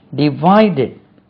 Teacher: Divided, stress lies on V.